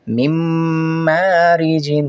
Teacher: نون ساکن کے بعد میم ہے تو نون کا میم میں ادغام کر دیں گے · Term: ادغام مع غنہ